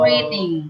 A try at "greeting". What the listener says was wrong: Ah, bukan greeting. Dia pakai i. Greeting. Mulutnya dibuka. Greeting.